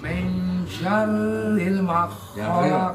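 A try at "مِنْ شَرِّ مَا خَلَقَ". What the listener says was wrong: Ma-nya panjangin. Gini ya. Syar. Ah, syar. Min syarri ma khalaq. Itu 2 3.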